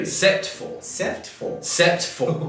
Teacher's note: we're kind of dropping syllables here we're not saying except for we saying SE for